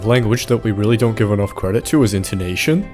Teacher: That sentence was in no possible way a question, and yet it sounded like it was because I steadily raised pitch of my voice towards the end.